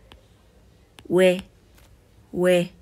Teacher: Entonces va a sonar we, we, modulando en O, oe, con soplido.